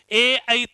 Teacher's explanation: ए और आई इसका उच्चारण स्थान क्या होता है? कंठ तालु होता है।